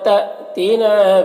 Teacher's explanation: الف کے اوپر زبر ہے، جزم ہے تو حمزہ ساکنہ ہوا، اسے جھٹکا لگے گا